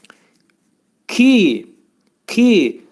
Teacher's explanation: K ki bu hərfi tələffüz edərkən demək bu hərfin məxrəci demək dilin sonu və dilçəyin axırındadır